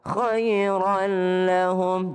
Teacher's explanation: Khairan lahum tidak berdengung. Ya, kalau ketemu dengan lam.